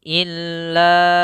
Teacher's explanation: Sehingga ini kita panjangkan 4 harokat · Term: mad jaiz